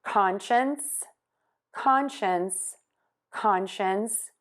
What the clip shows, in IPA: ˈkɑnʃəns